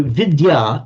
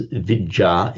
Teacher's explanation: So vidya in Sanskrit simply becomes vija in pi. The d sound in Sanskrit will become a double j